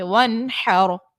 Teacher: لربی کا وانحر، نون ساکن کے بعد حا دیکھیں، یہ اظہار کا یہاں پر قاعدہ ہوگا کیونکہ نون ساکن کے بعد حا حرف حلقیہ کا ہے اور اظہار میں ہم نے غنہ نہیں کرنا ہوتا ہے، اور رو ساکن سے پہلے چونکہ زبر ہے اس لیے رو کو یہاں پر موٹا باریک پڑھیں گے.